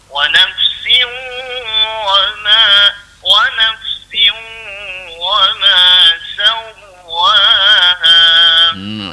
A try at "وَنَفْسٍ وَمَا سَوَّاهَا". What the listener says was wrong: Siu dia lemut aku tu. Wa nafsiu. Jangan siu yang sambak tu. Jangan wa nafsiu. Wa nafsiu wa ma. Buat tu. Bagi lemut tu.